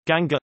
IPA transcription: ɡəŋɡɑ